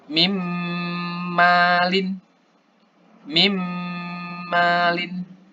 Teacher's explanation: Jadi nun ini, nun sukun ini tidak terbaca. Langsung ke mim. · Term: idgham bigunah